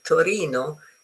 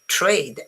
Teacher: The sound of t, it's different because the t in Italian, Torino, it's more towards your teeth, while trade, you need to put your tongue on your palate to be able to say it.